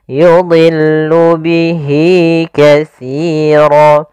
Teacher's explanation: Maka di sini kita panjangkan untuk mad silah qasirah sepanjang 2 harakat.